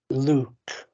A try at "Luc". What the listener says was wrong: No, you're saying it the English way. Say U, Luc. More twang. Close your mouth. Close your mouth. So get it in your nose.